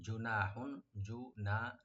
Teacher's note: নুন ওপেন রেখে একলা টানবেন, আর হার উপর যে তানবিন আছে এখানে আমরা জাহার করব, গুণা হবে না